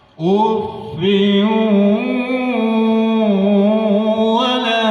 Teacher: Ada lebih banyak lah ya suara keluar melalui hidung sewaktu mengucapkan waw tasdid yang diawali dengan nun mati atau tanwin. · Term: idgham bi gunnahnya